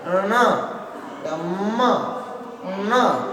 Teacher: तो ये बोलते समय जो हवा है वो नासिका के माध्यम से बाहर निकलती है